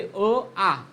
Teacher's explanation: अ चा उच्चार आचा उच्चार कंठामधून सर्वाधिक जास्त होतो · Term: कंठवर्ण